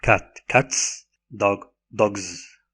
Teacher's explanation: the S assimilates in voice with the consonant preceding it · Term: voicing assimilation